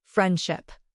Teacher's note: In isolation, we hear the D, but in the flow of a sentence, it becomes friendship. We skip the D to reach the SH sound faster. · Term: Elision